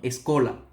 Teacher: cuando la S está entre vocal y consonante en el portugués, el sonido de la S pasa a ser SH